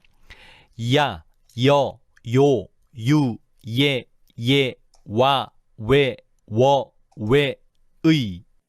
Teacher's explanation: 발음하는 도중에 혀와 입술이 움직이는 게 느껴지지? 이와 같은 모음들을 이중모음이라고 하는 거야.